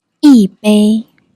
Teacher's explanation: When 一 followed by another first tone syllable, like 杯 its tone changes from the first tone to the fourth tone, becoming 一杯 The reason is simple.